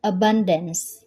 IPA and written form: əˈbʌndəns (Abundance)